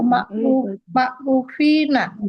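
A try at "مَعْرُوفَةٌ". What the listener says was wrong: Fa-nya nggak usah panjang.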